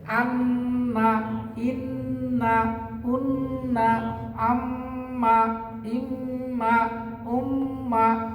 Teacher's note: খালি হরকতের সাথে আর মিম নুনের সাথে মিলাইয়া নাকের ভিতরে আওয়াজটা গেলে ওয়াজিব গুণনা হয়ে গেল।